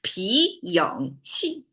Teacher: Second, third, fourth, rising, bend, falling tone. So it's a little bit twisty.